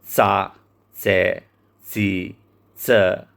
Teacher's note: Tingulli C është bashkëtingëllore. Formohet kur maja e gjuhës afrohet pranë dhëmbëve të sipërm dhe ajri del me një shpërthim të lehtë. C është bashkëtingëllore e pazëshme.